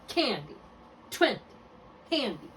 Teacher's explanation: Make sure you're accenting the first syllable.